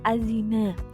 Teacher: Azina di sini dihukumi bacaan alif lam syamsiyah yang beralasan alif lam mati yang bertemu dengan salah satu huruf syamsiyah dibaca lebur sehingga bunyi alnya tidak dibaca atau disamarkan